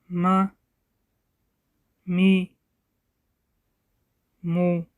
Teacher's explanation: Мим произносят, смыкая обе губы с носовым призвуком. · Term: буква Мим